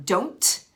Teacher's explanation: we don't necessarily always put that final T on don't